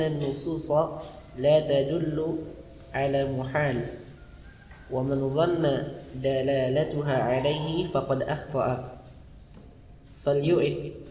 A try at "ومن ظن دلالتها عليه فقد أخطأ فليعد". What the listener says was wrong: Ini enggak yang salah, nadanya salah. Wa man dhanna dalalatuha alaihi faqad akhta'a falyu'idin nazara.